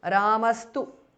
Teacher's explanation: visarga changes to s